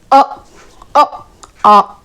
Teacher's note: अ आ कहां से आवाज आ रही है? कंठ से।